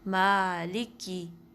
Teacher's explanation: شد ڈال دی کاف پہ اور اس پہ تھوڑا سا پریشر ڈال دیا، مالکی. تو یہ رانگ ہے، یہ مسٹیک ہے، اس سے بھی بچنا چاہیے.